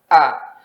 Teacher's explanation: Kalau A dia tidak mengalir sama sekali, benar-benar tertahan.